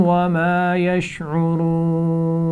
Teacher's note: وما یشعرون یہاں پر را پر پیش ہے تو موٹی پڑھی جائے گی